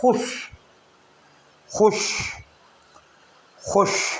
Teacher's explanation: اللہ مجھ سے خوش ہو جائے، خوش میں واو کے نیچے زیر لکھی ہوئی ہے، اس کو خوش نہیں بولیں گے، نہ پڑھیں گے، بلکہ یہاں واو کے نیچے زیر کا مطلب یہ ہے کہ اس واو کو لکھا تو جائے گا لیکن اس واو کو پڑھا نہیں جائے گا